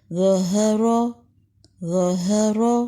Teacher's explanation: ظہر، ظا بلند ہے، را بلند ہے، را کے اوپر زبر ہے، بلند پڑیں گے لیکن ہا بلند نہیں ہے. ظہر، ظا میں بھی اوپر جائیں گے، را میں بھی اوپر جائیں گے لیکن ہا میں اوپر نہیں جائیں گے.